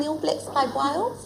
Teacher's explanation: our changing of the short A vowel so that it sounds more like a short E